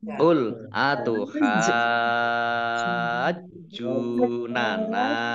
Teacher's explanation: Jadi ini namanya mat lazim musaqqal kilmi, dibaca panjang 6 harokat. 6 harokat, haknya panjang dulu 6 harokat, baru masuk ke jim ya. Jimnya dibaca double, ada tasdidnya.